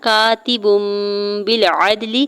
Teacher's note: زیر کو لام ساکن کے ساتھ ملاتے ہوئے پڑھنا ہے، اور عین کے زبر کو دال ساکن کے ساتھ ملاتے ہوئے دال ساکن پہ کلکلا کریں گے · با کے اوپر جو دو پیش کی تنوین ہے اس کو میم میں بدل کے پڑھیں گے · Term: اقلاب